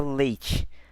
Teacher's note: o E ele vai ser a vogal dessa sílaba e o I vai ser um acompanhamento, vai ser a semivogal